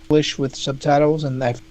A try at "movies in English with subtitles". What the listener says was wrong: You might have put the stress on tie and subtitles, and I think I would put the stress on subtitles. Yeah, I think I would do subtitles.